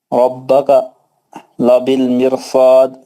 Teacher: صاد یہاں پہ مد عارض ہوگا اور قلقلہ کبریٰ ہوگا